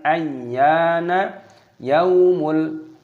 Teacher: Ya-nya di sini panjangkan dan ditasdid, dimasukkan, diidghamkan